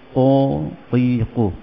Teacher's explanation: Huruf qaf ni dipangkal lidah ke arah anak tekak di dalam.